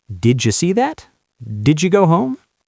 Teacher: D and Y, do they make a j sound like juice? Yes, did you becomes didja.